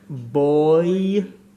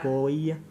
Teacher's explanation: That massive change between the O and the Y.